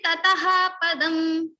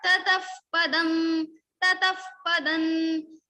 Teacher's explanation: Now for the same we are having this fa sound. Okay, so if after visarga like tataha visarga you have pa or pha, then the sound will be converted into upadmaniya · So tataha visarga is followed by pa, so we will say tataf. Fa sound will come in the place of visarga.